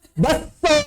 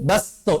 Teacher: Menghilangkan kaf, mentasydid sin. Baso, idgham.